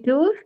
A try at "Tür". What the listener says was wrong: Again, you are saying tour. Don't make this mistake. Don't say the R part.